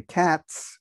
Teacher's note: cats with an S is by a voicing assimilation rule that the Z here turns into an S after a voiceless consonant